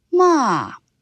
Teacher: the tone starts high and falls sharply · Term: Fourth tone